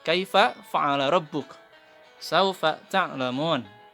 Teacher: huruf fa ini berasal dari perut bibir bawah beserta ujung gigi yang atas